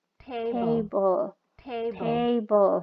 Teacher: silabel pertama dia lebih tinggi daripada silabel kedua karena memang stresnya ada di silabel pertama